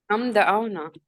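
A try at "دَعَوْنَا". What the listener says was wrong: दआऊना, दआऊ, दआना नहीं कहना, ठीक है, दआऊना, ठीक है।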